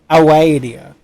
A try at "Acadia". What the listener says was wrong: No, it's a C.